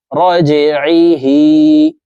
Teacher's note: জিম হরফ কলকলার হরফ নিচের দিকে ধাবিত করে ধাক্কা দিয়ে উচ্চারণ করব